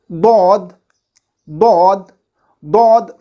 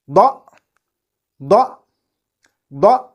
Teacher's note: It is articulated between the side of the tongue, either side, right or left, and the gums of upper molars from either side, from right side or left side. So, when the side of our tongue touches the gums of our upper molars either from the right side or from the left side, this letter dad is produced